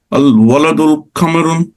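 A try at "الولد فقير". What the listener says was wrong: نہ الولد فقیر. فقیر. نو جب بھی ال لگ جائے تو میں نے آپ کو سکھایا تھا نا، جب ال لگ جائے تو پھر دھن ختم ہو جاتی ہے. ان کیوں کہا پھر آپ نے؟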